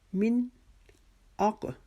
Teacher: والجاء, اس جا کے اوپر جو مد ہے اس کو ہم نے 6 الف کے جتنا لمبا کرنا ہے. من اق, موٹے قاف کے اوپر چونکہ جزم آ رہی ہے یہاں پہ قلقلہ کریں گے